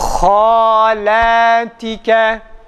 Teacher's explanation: Burada ha ile la, ha kalın, la ince. Öyleyse ses tonlarının da farklı olması gerekir. Biz halatike desek yanlış, halatike desek yine yanlış.